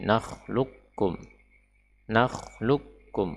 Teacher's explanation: huruf q tidak lagi terucapkan sama sekali ya tidak tidak terucap sama sekali wasbiru kata yang selanjutnya Ya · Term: diidgamkan